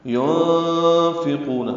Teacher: ينفقون نون ساکن کے بعد فا آنے کی وجہ سے اخوا ہے، نون کی آواز چھپائیں گے